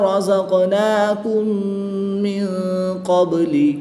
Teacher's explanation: میم ساکن کے بعد دوسری میم ہے تو یہاں پر ادغام شفوی ہوگا، غنہ کر کے پڑھیں گے